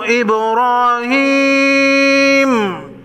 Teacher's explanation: ابراہیم با ساکن کو ہلا کر پڑھیں گے، را پر زبر ہے، را کو موٹا پڑھیں گے۔